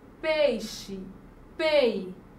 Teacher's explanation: o E, ele tem um som mais forte. Então, é vogal. Já a letra I vai ser semivogal. E nesse caso aqui dessa palavra, ela é um ditongo, porque é o encontro de vogal mais semivogal ou semivogal e vogal na mesma sílaba.